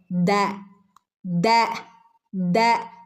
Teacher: നാവിന്റെ അറ്റം എവിടെയാ തട്ടുന്നത് മേലെയുള്ള മുൻപല്ലിന്റെ മുരടിലാണ് നാവിൻറെ അറ്റം തട്ടുന്നത് · ദാലിൻ്റെ മഹ്റജ്, ദാലിൻ്റെ ശബ്ദം വരുന്നത് എവിടെന്നാ? നാവിൻ്റെ അറ്റവും മേലെ മുൻപല്ലുകളുടെ മുരടും. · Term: ദാൽ